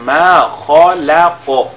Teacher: Au niveau de ma khalaq, nous avons le kha qui est lié avec at-tafkhim, le lam il est lié avec at-tarqiq. Ensuite nous avons le qaf qui est lié avec at-tafkhim et al-qalqala en même temps